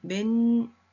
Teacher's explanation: 모음 앞에 있는 이응의 이응 자리에 니은이 들어갔습니다. 니은 첨가죠.